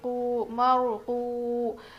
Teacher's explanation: پہلے زبر ہو تو وہ رو موٹی پڑھی جائے گی، مارو، واو ساکن سے پہلے پیش حرف مدہ تھوڑا کھینچ کر پڑھیں گے